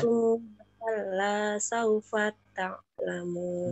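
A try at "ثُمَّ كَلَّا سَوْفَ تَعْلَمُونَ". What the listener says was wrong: Dengungnya tambah ibu. Summa, summa.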